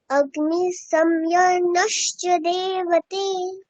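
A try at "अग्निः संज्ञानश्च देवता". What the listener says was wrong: বাহ, খুব সুন্দর।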